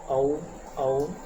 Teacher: कंठ ओष्ठ कंठ और होठों से जो बोला जाता है